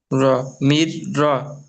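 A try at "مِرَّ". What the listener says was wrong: মির র। মির র হওয়ার কথা ছিল তো মোমর ভাই। শুধু এখানে একটুখানি আলাদা হবে। এখানে দেখেন মির র আপনি পড়লেন, কিন্তু তারপরেও আর একটা অক্ষরের ওপর কি এসছে, তাসদিদ এসছে। তাহলে এই তাসদিদওয়ালা অক্ষরটাও তো পূর্বে অক্ষরের সঙ্গে মিলিয়ে পড়তে হবে, তাই না?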